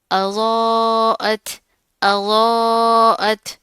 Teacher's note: غود موٹا پڑھیں گے، ساتھ کا الف بھی موٹا پڑھا جائے گا